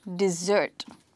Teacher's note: we are stressing this word on the second syllable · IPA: /di-zert/